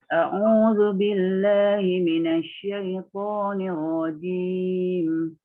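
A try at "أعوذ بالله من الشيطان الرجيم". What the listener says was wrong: Lembutkan lagi shin, ya. Minasyaitan.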